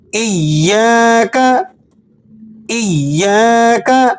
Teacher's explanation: اب اس لفظ میں عموماً سورہ فاتحہ میں لوگ غلطی کیا کرتے ہیں، یا مشدد ہے اور تشدید والا حرف 2 مرتبہ پڑھا جاتا ہے